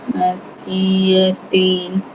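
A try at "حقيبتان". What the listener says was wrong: Bukan yatim. Ba lah tu. Haki. Haki Batan.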